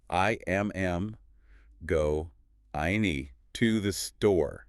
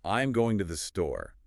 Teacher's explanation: a native speaker finds the important words go and store. Everything else gets crushed. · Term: stress timed language